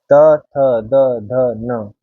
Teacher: त वर्ग में दंत्य है, यानी कि हमारी जीवा दंत पे लगेगी